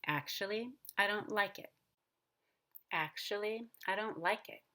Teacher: Notice that on like, I go up and then I go down on it because it's a regular statement